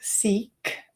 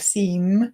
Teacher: if you've got an unvoiced consonant at the end, like seek instead of seam, the seek, the E sound, although it's the long E sound, it'll be slightly shorter